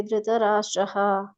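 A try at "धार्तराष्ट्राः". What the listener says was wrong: ಧಾರ್ತರಾಷ್ಟ್ರ. ಧೃತರಾಷ್ಟ್ರ ಅಂತ ಹೇಳಿದ್ರೆ ಧೃತರಾಷ್ಟ್ರ ಅಂತ ಆಗ್ತದೆ. ಧಾರ್ತರ ರಾಷ್ಟ್ರ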